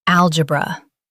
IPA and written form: ˈæl.dʒɪ.brə (Algebra)